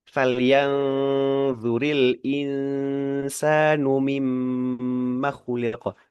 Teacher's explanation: Mim tasdid itu dihukumi sebagai ghunah. Jadi lama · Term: gunnah